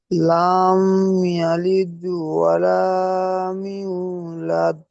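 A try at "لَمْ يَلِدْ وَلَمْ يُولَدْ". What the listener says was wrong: এখানে লাম ইয়ারিদ বলেছেন, লাম হবে না, লাম মিম সাবার লাম, লাম বলে টান হবে না। লাম ইয়ালিদ ওয়ালাম ইউলাদ, ইউ ইয়াও পেশ ইউ ওয়াও মাদ্দা, এখানে টান হবে, বাকি টান হবে না।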